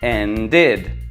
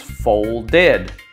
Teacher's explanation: id which adds a new syllable to the end of a word